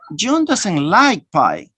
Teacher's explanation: Now the stress is in the word like.